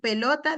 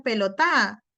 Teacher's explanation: La acentuación, por ejemplo, niños que acentúan la última sílaba constantemente